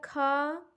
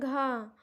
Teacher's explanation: तो यानी इन वर्ग के सभी अक्षरों को बोलते समय हमारे मुख से हवा ज़्यादा निकलती है, इसलिए इन्हें महाप्राण कहते हैं। · और दूसरा है महाप्राण, जिसमें वायु ज़्यादा निकलती है। जैसे वर्गों का दूसरा और चौथा वर्ड बोलते समय हमारे मुख से हवा ज़्यादा निकलती है। वर्गों का दूसरा क्या होता है खा और चौथा होता है घा।